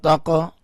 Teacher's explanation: تا قاف زبر تاق، قاف کے اوپر کلکلہ کیا، قاف کو اٹھایا